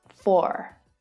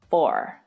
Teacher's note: the standard American accent pronounces the r at the end